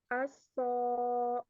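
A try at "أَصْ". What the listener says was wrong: Dialirkan ya. Ana sudah bilang tadi mengalir. Suaranya ngalir. Jadi jangan cuma aso. Nah, ini belum ngalir kalau seperti ini ya. Harus dialirkan. Aso, aso gitu.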